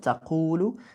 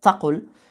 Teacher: The long vowels get squeezed into short vowels, which is why تقول becomes تقل.